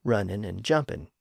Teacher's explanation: But as I noted, in multisyllable words, that final unstressed syllable had been reduced down to an N sound at the end